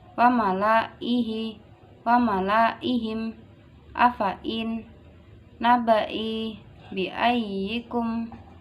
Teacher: Ya dibaca pendek atau dianggap tidak ada.